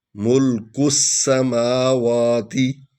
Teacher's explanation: یہ کلیہ بھی میں نے آپ کو بتایا ہوا ہے کہ سین پر شد ہے، اس لیے ہم پچھلے حرف کو جو ہے سین پڑھیں گے، الف لام نہیں پڑھیں گے